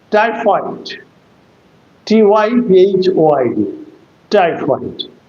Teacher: It is a disyllabic word and the first syllable must be accented.